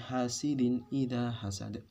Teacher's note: huruf dal yang berfathah kemudian dimatikan akhirnya menjadi qalqalah kubro